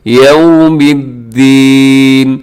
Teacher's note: اب یو کو خیال کیجیے گا کہ ہاں آپ کے ہونٹ گول ہو جائے تاکہ یو نہ ہو جائے بلکہ یوم الدین.